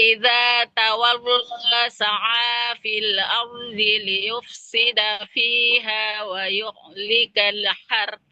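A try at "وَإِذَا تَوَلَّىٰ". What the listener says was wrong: Sebentar Ibu di tawalla, lamnya jangan tebal Ibu, jangan tawallo. tawalla. Nah, lam tebal itu hanya di lafadz Allah. Selebihnya lamnya tipis, nggak boleh tebal.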